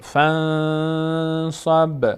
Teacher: نون بعدش صاد هست و اخفا میشه، نون باید از بینی ادا بشه و مقدار روش نگه میداریم صدا رو. فنصب به هم مقداری در مخرجش میلرزه.